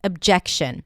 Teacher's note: it has a fun little schwa at the beginning, uh, even though it's spelled with an O